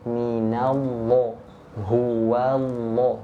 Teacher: huruf wau huruf nun ini kan tipis